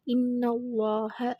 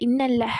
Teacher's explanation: அந்த அல்லாஹோட லேமை நம்ம ஹெவியாக ஓதணும் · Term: தஃகீம்